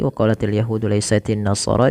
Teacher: nunnya berharakat di sini dengan tasydid maka dihukumi dengan bacaan gunnah dan dia ditahan suara bunyi nunnya, tidak langsung waqalatin nasara.